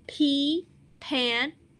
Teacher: i like to say it's like a puff of air